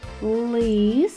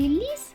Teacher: лис звук л звучить твердо а в слові ліс звук ль звучить м'яко